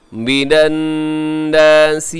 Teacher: یہاں نون مشدد ہے تو یہاں غنہ کیجیے گا